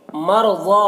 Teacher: मरज़ा, रा को पुर पढ़ेंगे, ज़ाद को भी पुर पढ़ेंगे, और ज़ाद में जो मद है यह मद मुनफसिल है, इसे 3-4 अलिफ के बराबर खींच कर पढ़ते हैं और 1 अलिफ के बराबर भी खींच कर पढ़ सकते हैं।